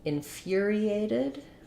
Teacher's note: So in infuriated, our stress is on the fur syllable, like the word fury.